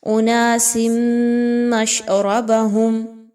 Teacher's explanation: کل اناس تنوین کے بعد میم کا حرف آ رہا ہے، یہاں پر آپ تنوین کی آواز کو میم کی آواز میں مکس کیجئے اور غنے کے ساتھ